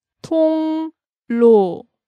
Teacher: 통 kind of ends in an NG-like sound, that 이응.